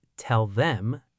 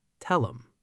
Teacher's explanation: In rapid American conversation, the initial voiced dental fricative, the, is completely decapitated. The entire word drops its front consonant and shrinks down into a tiny, low-amplitude nasal syllable, It's not tell them, it's tell 'em. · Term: initial pronoun decapitation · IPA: [tell-əm]